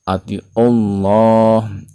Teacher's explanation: lafaz Allah dibaca tafhim tebal dikarenakan sebelumnya berharokat dhammah pada ain